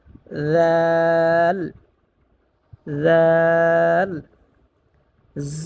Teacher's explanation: জিহ্বার আগা উপরের, সামনের উপরে দুই দাঁতের আগার সাথে লাগিয়ে জালটা উচ্চারণ করব